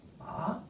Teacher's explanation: the fourth tone, which is falling